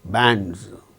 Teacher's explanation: because D is a voiced sound and the plural marker is pronounced as Z